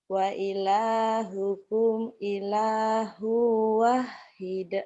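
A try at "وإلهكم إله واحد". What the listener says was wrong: Wanya panjang.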